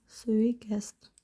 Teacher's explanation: Tələffüz zamanı d-da t-ya keçir